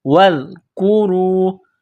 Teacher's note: را کو واو کے ساتھ ملانا ہے، را کو موٹا کرنا ہے